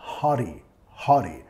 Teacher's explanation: En inglés de los Estados Unidos vamos a usar la R suave.